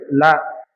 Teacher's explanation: இந்த லாங்கிறது மேல் பற்களின் அடிப்பகுதியை தொடுவதால் பிறக்கிறது